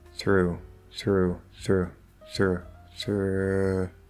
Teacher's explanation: okay we have that r to u through through through through you can kind of reduce that ooh to like an uh it's not thra right but it's sort of like a really lazy ooh